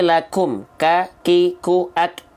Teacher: Jadi dia bukan betul-betul mengalirkan nafas, tapi dia hanya berupa untuk huruf kaf percikan nafas saja.